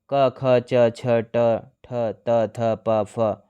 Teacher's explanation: इन वर्णों के उच्चारण में स्वर तंत्रियां आपस में नहीं मिलती, जिसके कारण वायु आसानी से बाहर निकल जाती है। प्रत्येक वर्ग का पहला और दूसरा व्यंजन अघोष है। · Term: अघोष वर्ण